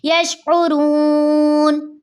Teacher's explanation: واو مدہ کے بعد نون کا سکون عارضی آ رہا ہے، وف کی صورت میں نون پہ ہم عارضی جزم لگا دیں گے تو نون کا سکون عارضی آ رہا ہے، اس لیے یہاں پہ مد عارض وفی بنے گی، جس کو ہم 3 الف کی مقدار کھینچ کر پڑھتے ہیں